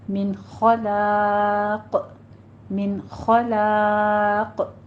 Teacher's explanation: قاف ساکن ہو جائے گا، اس لیے قاف کے اوپر قلقلہ کریں گے